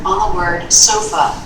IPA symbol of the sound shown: ə